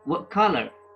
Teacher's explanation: So the T is said as a glottal stop.